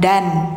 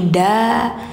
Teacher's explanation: Jadi bukan dan tapi da, karena di akhir ayat, di akhir kalimat mad iwad, setiap tanwin fathah posisinya di akhir, maka suara n-nya hilangkan digantikan ke bunyi panjang